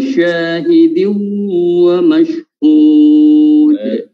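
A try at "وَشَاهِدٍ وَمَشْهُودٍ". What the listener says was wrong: Ditahan lagi. Wa syahidin wa Hud, kurang 4 harokat.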